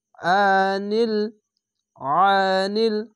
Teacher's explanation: আইনটিকে মোটা করে গলা চিপে পড়বেন